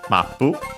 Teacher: should be accented on the first syllable just like in English